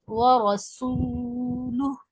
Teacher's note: क़ुतुबु जद्दिन क़ाफ़ ता बा जीम दाल, यानी لوٹ کر باؤنسنگ ساؤنڈ کے ساتھ پڑھیں گے عبدہ، عبدہ، عین بھی ادا کرنا ہے، عبدہ ورسولہ، را کو موٹا پڑھیں گے، ورسول، سین میں سیٹی کی آواز ادا کریں گے واو مدہ کے ساتھ